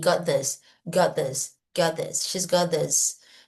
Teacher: tira o T do got e põe got this, tudo junto